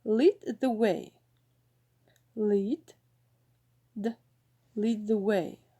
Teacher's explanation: the alveolar position is particularly sensitive to the influence of the place of articulation of a following consonant thus followed by the interdental it becomes dental